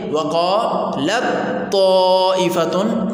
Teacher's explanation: یہاں پر مدغم تا ہے، مدغم فی طا ہے، دونوں کے ادا ہونے کی جگہ ایک ہے، لیکن چند صفات میں یہ ایک دوسرے سے الگ الگ ہیں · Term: متجانسین